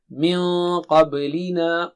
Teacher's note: Noon is thin but qaf is thick and high, therefore noon sakina will also become thick when you do ikhfa.